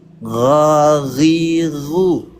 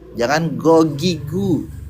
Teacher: G-nya jangan G Indonesia ya, G-nya G Arab. G Arab gimana? Ada getarannya.